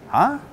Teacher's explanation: just the word ha by itself with the intonation going up